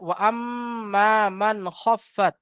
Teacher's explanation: নুন সাকিনকে বিনা গুন্না জাহির করে তাড়াতাড়ি পড়তে হবে, একে ইজহার বলা হয়।